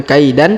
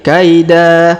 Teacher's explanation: tanwinnya yang berwarna merah kita hilangkan ya kita rubah menjadi fathah atau a cara bacanya yakiduna kaida Jadi bukan kaidan tapi kaida ya dipanjangkan